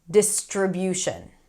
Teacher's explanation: So, we have s t r three sounds in the middle of the word. We want to make sure that we connect them together.